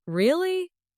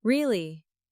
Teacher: Rising tone curiosity. Really? Falling tone confirmation. Same word, two meanings, just from tone. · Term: intonation